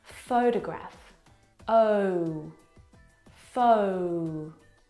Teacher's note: the first syllable is the stressed syllable you can hear it very clearly